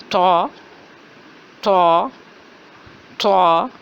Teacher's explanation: آواز ہے موٹی اور جھٹکے والی